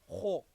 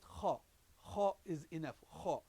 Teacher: that back of the tongue should be touching the back of the roof of the mouth.